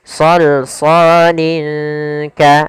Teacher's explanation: Kemudian linka ada tanwin ada tanwin berupa kasrottain bertemu dengan huruf kaf sama hukum tajwidnya yaitu ikhfa. Cara membacanya samarkan lin ya ke huruf kaf